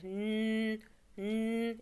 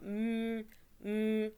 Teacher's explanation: Il faut juste sentir qu'en fait, qu'il y a un nasillement. Donc, que le son passe également par le nez. Il y a de l'air qui passe, on va dire. · lorsqu'on va prononcer ces lettres-là, on va sentir que l'air va également, enfin, le son va également passer par le nez. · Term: lettres de la cavité nasale